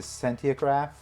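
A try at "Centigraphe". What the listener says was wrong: I think it's just centigraph. You added a whole extra syllable. Centiograph.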